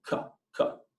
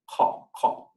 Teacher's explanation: The Q sound is more like the sound that the crow makes, so it's kind of in the back of the throat